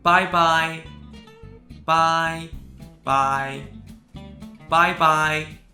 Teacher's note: bye is actually fourth tone, but it is pronounced in the first tone when it means goodbye